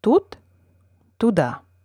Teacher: lack of stress has relatively little effect on the vowel ooh · Unstressed vowels are, in general, shorter and less tense than the corresponding accented vowels. Lack of stress has relatively little effect on the vowel U, the unaccented variant being simply less tense and full-sounding.